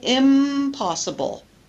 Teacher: it's easier to say M because M and P are produced in the same region with both lips together, bilabial